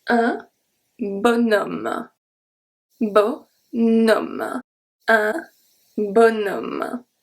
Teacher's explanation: when on is not pronounced on, but we are going to pronounce o and then we are going to pronounce the n, which usually happens when we have a vowel after on.